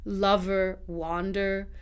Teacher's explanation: So unstressed R-colored schwa is for your unstressed ER endings.